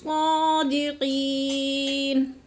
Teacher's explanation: اور صادقین، قی میں یا مدہ، یا مدہ کو ایک الف 2 حرکات کے برابر ہم نے لمبا کر کے پڑھنا ہے